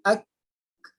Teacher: Jadi mestilah kita sempurnakan huruf kaf ni, bukan sekadar makhrajnya, juga sifat ni. Sifat syiddah tu tahan dulu, ak, baru keluar angin.